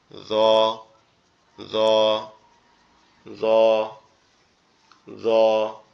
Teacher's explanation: জিহ্বার আগা সামনের উপরের দুই দাঁতের আগার সঙ্গে লাগবে